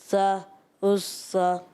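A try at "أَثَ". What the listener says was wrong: زبان آپ کی صحیح لگتی نہیں ہے. صحیح لگائیں گے نا. اس سا اس سا اس سا.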